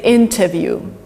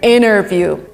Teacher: or completely disappears from a word again widely used in america in great britain you would say interview in america interview so t here just disappears interview that's it i would actually say it's substituted by another